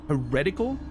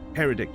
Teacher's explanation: in heretical the accent's on the second syllable, the second E